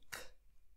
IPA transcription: k